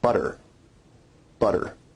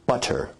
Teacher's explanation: notice where we write it with two t's in english that your tongue is producing a tap sound there rather than a full stop or plosive sound